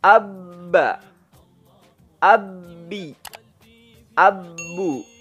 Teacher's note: bertemunya kedua bibir bagian dalam